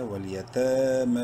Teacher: تا کھڑی زبر تا میم کھڑی زبر ما دونوں کو ایک ایک کے برابر لمبا کرنا ہے. دونوں کے اوپر کھڑی زبر ہے یعنی تا اور میم کے اوپر، یا سائلنٹ ہے.